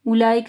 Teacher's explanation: اولئک میں دیکھیں مد ہے، اس کے بعد حمزہ ہے تو 4 سے 5 حرکات کے برابر لمبا کرنا ہے